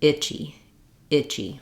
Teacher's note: I is long and Chi is short